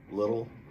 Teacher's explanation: little, the two T's reduced to that R sound in Janeiro